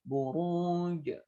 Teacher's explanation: Buruj ra-nya tafkhim. Ruj ini berarti mad arif lis-sukun dan jimnya hukumnya qalqalah karena di sukun